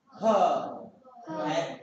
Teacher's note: ह्या वर्णाचा उच्चार करताना फुफ्फुसातील हवा तोंडावाटे जोराने बाहेर फेकली जाते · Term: महाप्राण वर्ण